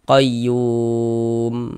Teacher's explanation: Huruf mim kan tidak dibaca panjang. Karena berhenti di huruf yang tidak dibaca panjang, maka hurufnya kita sukunkan sehingganya kita baca qayyum seperti itu. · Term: berwakaf